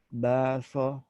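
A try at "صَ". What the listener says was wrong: Lebih berat lagi, lebih isti'la, lebih tafkhim, lebih tebal. Baso, so, so.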